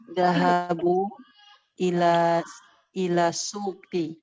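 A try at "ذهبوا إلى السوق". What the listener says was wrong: Ahsant.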